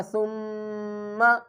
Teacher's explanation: گنہ کر کے پڑھنا ہے، آواز کو ناک میں چھپا کر پڑھنا ہے